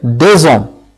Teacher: le S s'accorde avec le O, la voyelle O, il devient Z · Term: liaison